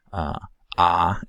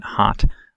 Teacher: the low back vowel where there's a significant constriction in the pharyngeal space ah as in hot as shown in the thicker dashed line